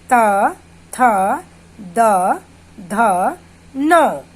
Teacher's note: हमारे जीभ का आगे का जो भाग है वो दांतों को टच करता है, दांतों को छूता है। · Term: दंत्य